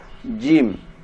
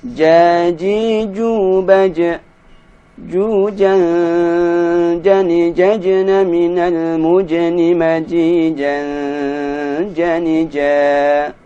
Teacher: Huruf jim, ini cara mengucapkannya tidak boleh disertai keluarnya nafas